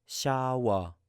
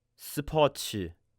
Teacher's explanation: Now, this letter also has two sounds that are very distinct. One of them is an SH sound, and the other is an S sound.